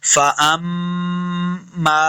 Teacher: मीम के आगे अलिफ, इसके ऊपर छोटी मद है, तो हमने इसको लम्बा करना है।